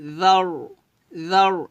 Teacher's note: এখানে জাল পাতলা হবে, তবে র সাকিনকে যখন ধরবেন র সাকিন মোটা করতে হবে।